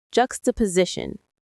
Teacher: Jux, ta, po, si, shun. There are 5 syllables. The main stress is on the C part near the end.